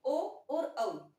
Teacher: ओ और औ को बोलते समय है हमें कंठ और होठ दोनों का सहारा लेना पड़ता है, इसलिए इन्हें बोलते हैं कंठोष्ठ या कंठ व होठों से।